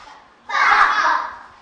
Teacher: miệng cô mím chặt, luồng hơi bị môi cản. Cô phải bật môi để phát âm. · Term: âm B